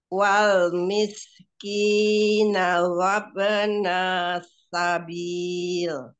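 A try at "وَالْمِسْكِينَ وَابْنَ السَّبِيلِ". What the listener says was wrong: Sofir di huruf sinnya mana? Wal miskina.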